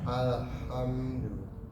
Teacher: desisnya keluar dari kerongkongan, tidak dari jauh, tidak dari mulut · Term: huruf ha